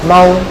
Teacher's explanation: দেখেন এটা কিন্তু ওয়াও মাদ না, এই ওয়াও পেশ পেয়েছে, কিন্তু তার আগের অক্ষরে কিন্তু পেশ নাই, জবর, এই জন্য এটা টানা যাবে না, দ্রুত বলতে হবে।